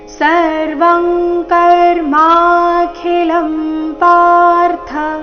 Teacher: ಇಲ್ಲಿ ಅನುಸ್ವಾರದ ಉಚ್ಚಾರಣೆ ಕ ವರ್ಗದ ಅನುನಾಸಿಕ ಅಂಗ ರೀತಿ ಬರಬೇಕು